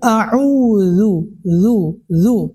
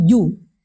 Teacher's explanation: membaca auzubillah dengan huruf dza dia ganti dengan huruf jim padahal itu keliru ya jangan huruf jim jangan sesekali kita menggunakan huruf jim pada kalimat istiadah nanti akan terdengar ee tidak enak bahkan itu akan merusak maknanya harusnya auudzu zu bukan ju.